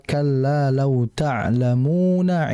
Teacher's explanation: Tapi pada ayat yang kelima kalla lau tlamuna ilma maka mu di situ bukan mad arid sukun masuknya melainkan masuknya adalah mad asli. Karena wau mati sebelumnya ada mim berharakat dommah maka dibaca dua harakat saja